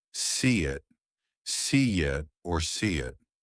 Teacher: You plus keep the vowel flowing. Linking vowel to vowel. Insert a light glide.